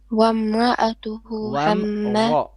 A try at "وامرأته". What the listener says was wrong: Ra is heavy. Wamra'atuhu. Who, long vowel on the who. 2 beats.